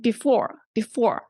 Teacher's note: weird unlike behind we didn't say behind right and before before so the second syllable is stressed